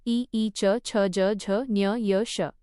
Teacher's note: तालव्य टाळूला स्पर्श करून निघणारे